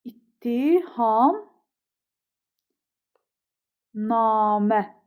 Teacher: Yəni t-dan biri d olur. Namə sözündə isə a uzanır. Deməli, yazılışı ilə tələffüzü fərqlənmir.